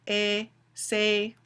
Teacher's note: It's a mid-front, tense, unrounded vowel.